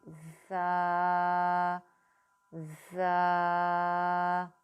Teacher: اس میں تھوڑی سی سختی بھی کرنی ہے اور سیٹی کی آواز بھی. جب اوپر اور نیچے کے دونوں دانت جو ہیں وہ زبان کی نوک رکھ کے آپ آپس میں ملائیں گے تو خود بخود آپ کی سختی والی اور سیٹی والی آواز آئے گی. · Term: سیٹی والا حروف